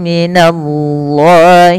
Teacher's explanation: pada lafal Allah di sini dibaca tebal